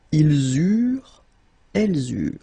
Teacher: when we've got this ENT ending at the end of the plural form, so third person of the plural, you don't pronounce it, so you get eurent.